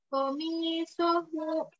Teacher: Komisohu abrohi. Mi sama hu harus sama berarti panjangnya. Komi sohu mi hu, jadi dua harokat sama-sama dua harokat, maka panjangnya juga harus mirip.